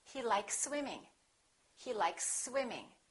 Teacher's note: You can prolong the s a little bit but don't pause. Don't interrupt the sounds and don't break the two words in half.